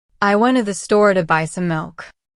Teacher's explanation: The stress usually goes on went, store, buy, and milk. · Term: sentence stress